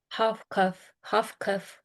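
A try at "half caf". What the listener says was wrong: So it's more calf. The vowel is more ah. So calf.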